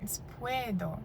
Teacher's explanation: U is a little bit shorter and a little bit weaker than the E. It's puedo.